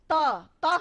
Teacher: त हम बोलते हैं तो हमारी जीभ हमारे दांतों तक आती है